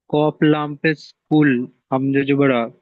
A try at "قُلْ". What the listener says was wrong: না, কেটে কেটে বানানো রকম নয়, কব লাম